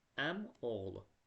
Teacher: Yəni belə tələffüz olunur. Əm oğlu i düşdü, amma o uzun tələffüz olunmadı.